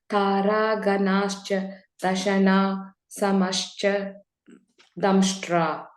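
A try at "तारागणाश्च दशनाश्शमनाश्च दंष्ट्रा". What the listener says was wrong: Yeah, and between the Dashana and Shamanascha, there is a ish which is joining it. So Taraganascha Dashanash Shamanascha Damshtra, because Visarga is there, right? That becomes an ish.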